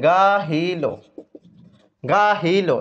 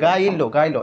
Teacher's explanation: হ্যাঁ, তাহলে দেখেন গাহিল, গাহিল, এই যে হ এর সাথে রসিকার আছে, এই হকার লোভ মানে কি, হটা আপনি ফালাই দিবেন, গাহিল থেকে গাইলো, গাইলো, এই রসিকার এই রস্যই আর এই ল, কিন্তু হটা আমরা ফালাই দিলাম, এটাকে আমরা বলছি হকার লোভ, হকার লোভ।